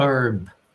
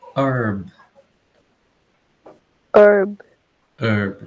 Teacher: Então, Estados Unidos e Canadá, a gente não tem o som do H. Então, a pronúncia é herb. E vejo que a gente tem o som do R aqui sendo pronunciado. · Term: não temos H